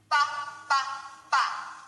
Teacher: that's a b sound same as P but with our voice